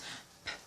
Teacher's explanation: The use of the both lips, the 2 lips. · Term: bilabial